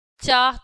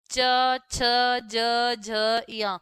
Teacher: च वर्ग का जो उच्चारण स्थान है तालु, कैसे? चा तालु को टच कर रही है हमारी जो जीव है, ठीक है।